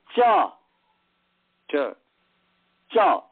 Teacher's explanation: जिह्वा का मध्य ऊपर उठने का कोशिश करता है, तो वह ऊपर वाला गुंबज सबसे ठीक ऊपर का और दांत के बगल का माने गाल के पास जो है, गाल के दांत के ऊपर वाला ये पूरा जो भाग है वह तालु का है।